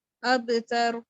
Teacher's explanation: ایک ذوف والا قلقلہ کریں گے جو کہ نہ زیادہ قوی ہو نہ زیادہ کمزور ہو